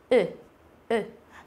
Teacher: Thì không hề có cái độ chu miệng ra, mình không tròn miệng lại mà mình bẹt miệng ra như chữ ư nhưng mà mình lại đọc là u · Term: u ngắn